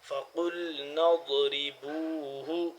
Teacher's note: ضاد کا مخرج زبان کی کروٹ کو داڑوں کی اوپر والی داڑوں کے ساتھ ٹچ کریں گے تو تب ادا ہوگا ضاد